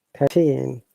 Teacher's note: look at the team number stress is on the second syllable